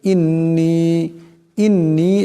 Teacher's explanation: নুন মুশাদ্দাদ কে এক পরিমাণ গুন্না করিয়ে পড়তে হবে